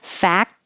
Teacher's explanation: the word fact, you don't have to make a good T. You can just leave it off